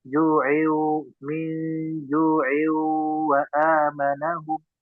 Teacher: tanwin bertemu waw idgham di gunnah dimasukkan, dan ada dengung gunnah yang ditahan